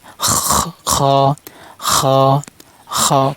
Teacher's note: এবার খ। খ হলকের শেষ অংশ থেকে উচ্চারণ হবে, মানে গলা শেষ অংশ থেকে উচ্চারণ হবে।